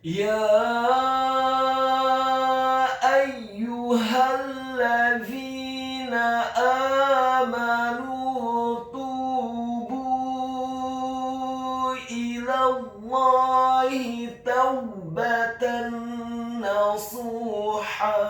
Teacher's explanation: huruf za-nya dibaca tipis, tarqiq, lidahnya agak keluar sedikit, kasroh 2 harokat karena setelahnya ada huruf ya sukun. · huruf ya-nya dibaca tipis, tarqiq, fathah 4-6 harokat. Karena harokat fathah pada huruf ya adalah harokat fathah yang tegak. · huruf ha-nya dibaca tafkhim, tebal, fathah cukup 1 harokat saja